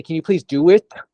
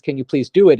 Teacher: when you're upset you pronounce the T more than you would on a regular conversation